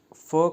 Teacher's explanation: फ वर्ण का उच्चारण स्थान, फ वर्ण का उच्चारण स्थान है दंतोष्ठ। जब हम फ को बोलेंगे तो हमारा दंत और ओष्ठ, मतलब दांत और होंठ आपस में मिलेंगे, इसलिए दंतोष्ठ।